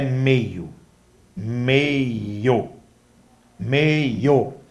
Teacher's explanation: A palavra meio, o O também é forte, é vogal. O I passa a ser fraco, semivogal. · Observe que na palavra meio, o E ele é forte, então ele é vogal. A palavra meio, o O também é forte, é vogal.